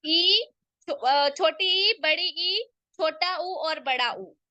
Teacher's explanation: इनके उच्चारण में मुख द्वार संकरा हो जाता है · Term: समृत स्वर